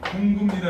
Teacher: 그리고 그 다음에 이제 이렇게는 아무것도 아니고 그다음 비읍하고 니은이 만나면 비읍이 미음으로 바뀌지